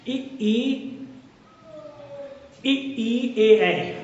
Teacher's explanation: तो हमारे होठ जो होते हैं वो फैल जाते हैं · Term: प्रसत